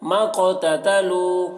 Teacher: قاف حروف قلقلہ میں سے ہے اور اس پر جزم ہے، قاف میں قلقلہ ہوگا